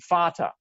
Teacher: In German, it's spelled with a V, but it's pronounced the same letter is still that F sound